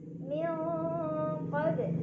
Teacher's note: Cara bacanya nun sukun disamarkan ke qaf sambil dengung. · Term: ikhfa ab'ad